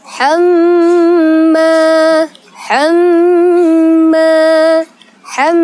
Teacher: itu disebut dengan gunnah karena ada mim bertasydid